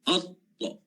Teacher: hujung lidah kita menempel, saya guna istilah menempel lah, menempel pada bahagian gusi atas depan.